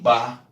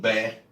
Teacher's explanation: Porque a consoante B é bilabial. Ela fecha a boca. Mas quem faz a boca abrir é o A.